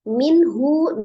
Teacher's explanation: minhu nun sukun ketemu dengan ha dibaca izhar halqi, ha huruf dari tenggorokan